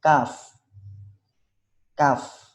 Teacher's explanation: pangkal lidah paling belakang pada posisi menempel langit-langit antara bagian tulang atas dan bagian yang lunak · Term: huruf Kaf